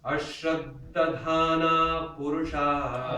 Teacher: Ashraddhana purusha. It's a double D in the first, second syllable, so you want to spend double time on it.